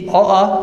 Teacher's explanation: अ आ जो हमारे हैं स्वर, उनका उच्चारण स्थान कंठ होता है